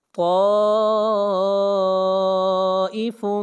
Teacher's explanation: الف مدہ کے بعد حمزہ اسی کلمہ کے اندر ہے، اس لیے اس مد کو 3 الف کے برابر کھینچ کر پڑھیں گے، اور یہ مد متصل ہے۔